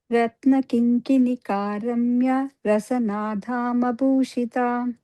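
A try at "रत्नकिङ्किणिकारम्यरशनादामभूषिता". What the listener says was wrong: Dhama, but Dama, okay? Soft da.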